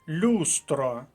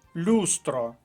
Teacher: наголос на перший склад перший склад перша колонка